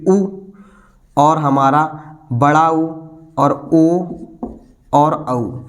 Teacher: कि ओष्ठ है यानी कि यहां लिखा गया ओस्ट की आकृति ओस्ट की आकृति गोल हो जाती है · ओष्ठ की आकृति गोल हो जाती है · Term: वृत्ताकार